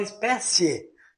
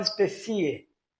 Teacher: Então veja bem que o e ele é mais forte por isso ele é crescente